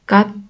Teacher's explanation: T harfi kelimenin sonunda D şeklinde okunuyor.